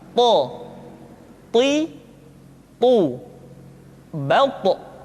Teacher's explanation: ketika to diucapkan, suara kita terdengar menebal. · To diucapkan dengan menyentuhkan ujung lidah dengan gusi-gusi dua gigi seri bagian atas. Sifat yang dimiliki oleh huruf to yang mesti nampak ketika kita ucapkan adalah sifat al-isti'la dan sifat al-itbaq.